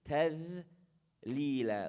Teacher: The dhal, again, tip of the tongue, edge of the teeth. تذليلا, light.